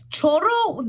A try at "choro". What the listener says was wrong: Choro. No, because you're rolling the R. So if you're rolling the R, it's chorro, which is what I said, but un choro. Then it's un ladrón.